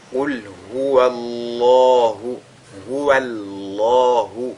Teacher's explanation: il faudra que ce soit uniquement le mot Allah qui soit lu avec emphase, non pas la lettre waw qui le précède · Et donc, on a affaire ici à un cas de at-tafkhim, dont le lam du mot Allah est donc lu avec agrandissement